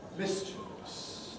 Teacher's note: this is stressed on the miss